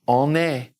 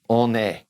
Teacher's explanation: I'm going to carry that N over because it's followed by a vowel